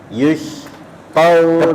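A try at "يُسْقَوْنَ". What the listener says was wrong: Kebesaran S-nya Bapak. Pakai sin aja, senyum. Yusqawna ya.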